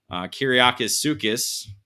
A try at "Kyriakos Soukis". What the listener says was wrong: No S. Kyriako Soukis.